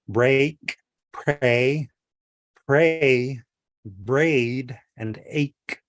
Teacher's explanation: So, you're you're sort of elongating your mouth. You're making your mouth a little bit wider to pronounce the a sound, a flat A.